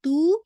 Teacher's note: آپ نے پورا 2 کاؤنٹ پڑھنا ہے کیونکہ یہ آپ کی بالکل نیچرل مد ہے، مد الطبعی ہے